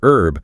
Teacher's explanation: Americans proudly pronounce the H in herb.